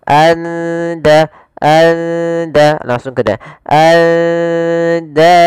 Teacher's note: Maka suara nunnya samarkan ke da. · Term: ikhfa hakiki